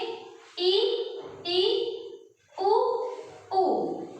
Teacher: बोलने पर हमारा मुख जो होता है पूरा बंद होता है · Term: संवृत स्वर